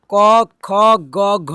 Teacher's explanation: देखिए, कंठ से क वर्ग हो गया।